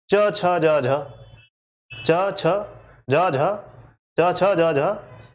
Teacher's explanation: तो चा, छा, जा और झा, ठीक, इनके उच्चारण में ये अपने उच्चारण स्थान को अधिक समय तक छूते हैं। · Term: संघर्षी